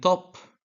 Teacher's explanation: t in top involves the tongue touching in the alveolar ridge